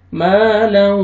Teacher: یہاں پہ ادغام کریں گے غنہ کے ساتھ، لو نوز میں ساؤنڈ لے کے جائیں گے، ما لو، واو پہ لپس کو آپ نے راؤنڈ میں لے کے جانا ہے، ہونٹ گول کرنا ہے تاکہ واو اچھی طرح ادا ہو، وعددہ، الذی جمع مالا وعددہ۔